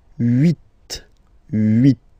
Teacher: Okay, then here final T is pronounced, so huit, huit. Remember in French this H letter here, okay, doesn't exist phonetically, so we don't really pronounce it